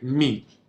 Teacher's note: It's almost like M-E. It almost sounds like it has an N in there, but it's this nasal sound.